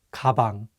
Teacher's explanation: usually the consonant kyok sounds like an english g however if it's at the beginning of the word it takes on the english k sound